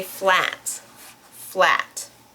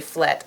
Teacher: Dutch speakers often pronounce the ah sound in English, and that's that they change it to an eh. So in English, we say flat, flat.